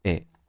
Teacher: ए के उच्चारण में कम समय लगेगा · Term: ह्रस्व